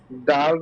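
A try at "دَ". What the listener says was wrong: দাল জবর দল জবর দ দ মোটা হবে দাল জবর দা দল জবর দ দ দ হ্যাঁ দদের মাখরাজটা জানেন তো জিহ্বার গোড়ার কিনারা উপরের মাড়ির দাঁতের গোড়ার সঙ্গে লাগিয়ে হ্যাঁ এটা হলো দ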